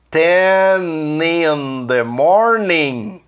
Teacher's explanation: Olha o N do 10 juntando com in